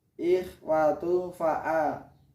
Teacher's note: Karena ada dhammah tanwin bertemu dengan fa, dengan salah satu huruf ikhfa. Dhammah tanwin bertemu huruf fa, maka dibaca samar. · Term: ikhfa hakiki